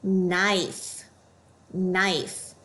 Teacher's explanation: You should also notice the KN. The K will be silent. All we hear is the N.